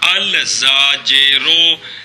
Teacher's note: زاجرن الف لام داخل کیا، الزاجرو، لام کو زا کیا، زا کا زا میں ادغام کیا، الزاجرو۔ تاجرن الف لام داخل کیا تو التاجرو، التاجرو، پھر لام کو تا کیا، تا کا تا میں ادغام کیا، التاجرو۔